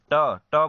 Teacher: आपका जीभ है जो है मुख में ऊपर जाएगा और पीछे की ओर मुड़कर वह तालु को स्पर्श करता है, इसीलिए इसे मूर्धा व्यंजन कहते हैं।